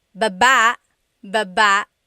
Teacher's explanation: Emphasis is on the second syllable